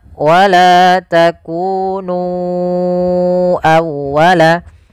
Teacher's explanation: Maka kita harus memanjangkan nu-nya sepanjang 4 atau 5 harakat. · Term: mad jaiz munfasil